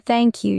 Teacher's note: Your tongue comes out a little.